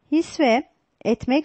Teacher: c-men etmek D hissetmek seçenekleri incelediğimizde hissetmek sözcüğünde ünsüz türemesi vardır hisse etmek sözcükleri birleşirken s sesi türemiştir